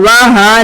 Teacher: ہا اقصی حلق سے سینے میں وائبریشن ادا کریں گے۔ جب آپ ہا کو ادا کریں گے تو سینے میں وائبریشن فیل ہوگی۔